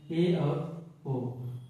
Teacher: ऐसा स्वर जिनका उच्चारण करने पर जो की मुख द्वार आधा बंद रहता है उसको अर्ध समत कहते हैं और इसके अंतर्गत दो स्वर आ